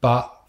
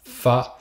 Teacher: Je vois pas trop le rapport entre B et F. Sauf que le B, ce qu'on appelle une bilabiale, on le fait en écartant avec les deux lèvres, et que le F se fait avec une lèvre et les dents du haut